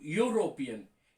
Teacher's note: European, E-U-R-O-P-E-A-N. The sound is Y-U, not U. Actually, Y-U, European.